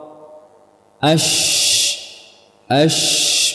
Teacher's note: Dia ada celah di antara lidah dan langit-langit, ada celah, sehingga sifatnya bukan syiddah, namun lawan dari syiddah yaitu rakhawah. Ash mengalir, suaranya mengalir.